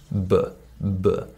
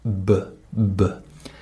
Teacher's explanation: I make a vibration in my throat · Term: voiced consonant